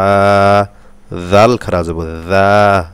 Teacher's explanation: জাল পাতলা হবে জিব্বার আগা দিয়ে